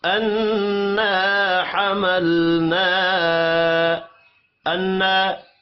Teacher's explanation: نون مشدد پر غنہ کریں گے، الف مدہ ایک الف کے برابر کھینچ کر پڑھا جائے گا۔